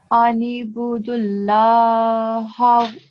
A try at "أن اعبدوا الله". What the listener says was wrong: This one is a ayn, and you have to pronounce this ayn. You don't pronounce this like alif. You don't say anibudu. You say anirbudu.